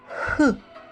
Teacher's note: проходженні струменння повітря видиху через цю щілину утворюється шум звук х голосові зв'язки розімкнуні не вібрують голос відсутній звук глухий